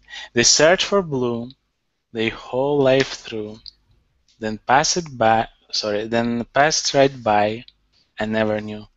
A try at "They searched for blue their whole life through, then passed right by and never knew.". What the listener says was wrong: Very good. Really good pronunciation.